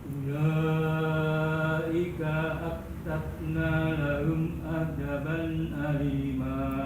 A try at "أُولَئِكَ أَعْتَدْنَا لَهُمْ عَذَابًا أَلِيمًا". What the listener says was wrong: Kebanyakan azaban.